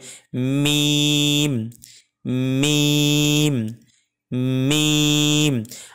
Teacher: ভাগে দেখবেন যে আমাদের শুকনা অংশটি আছে ঠোঁটের এই শুকনা অংশটিকে দুই ঠোঁট একসাথে মিলিত হয়ে একটু চাপ দিয়ে মানে একটু শক্ত করে উচ্চারণ হবে · মিম উচ্চারণ হয় দুই ঠোঁটের শুকনা অংশ থেকে অথবা দুই ঠোঁটের বাহির অংশ থেকে।